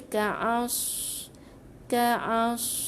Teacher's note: Jangan keluarkan udara dalam bawah mulut kita. Kalau ka'as tu huruf sin tak betul. Ka'as huruf sad tebalkan.